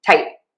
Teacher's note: you might hear people say tight with an unreleased T. And that means that the air is not popping out at the end, but we're marking the T by kind of keeping the tongue in the spot where we would usually make a T, tight.